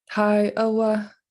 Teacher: you'll hear a long high a